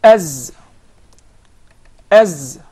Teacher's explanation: as and there is actually a whistling sound as as as so the Z comes from the tip of the tongue